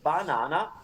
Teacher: So while in English, you have the word banana with 3 different sounds for the vowel A, banana, we Italians say banana with the same sound 3 times because it's consistent.